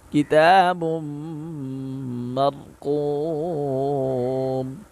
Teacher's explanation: قاف حروف مستعلیہ میں سے ہے، اس کو موٹا پڑھیں گے۔